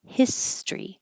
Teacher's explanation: His story sounds like story, but in the, excuse me, in the word history, it looks like the same STORY, but it doesn't sound like that. We get rid of this O and we make it two syllables, history.